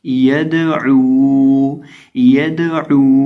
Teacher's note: तो इसको हम हिलाकर पढ़ेंगे, इसको पढ़ेंगे यदऊ, यद यदऊ, यानी दाल को थोड़ा सा वाइब्रेट होगा, ये इसके अंदर एक हरकत सी पैदा होगी, इसको हिलाया जाएगा और इसकी आवाज़ यूं आएगी यदऊ यदऊ। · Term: हरूफ कलकला